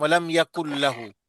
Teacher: نون کا اظہار نہیں ہے، ادغام ہے، ادغام بغیر غنہ، ادغام جی بغیر غنہ.